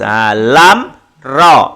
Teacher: Sama-sama al-lisan, ujung lidah naik ke langit-langit atas. Lam ra. Lam ra sama-sama dimulai dengan lidah naik ke atas.